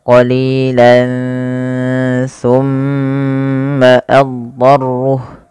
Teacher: Kemudian pada lafal summa tahanlah bacaan summa karena ia bacaan gunnah sehingga mimnya wajib ditahan sepanjang 2 harokat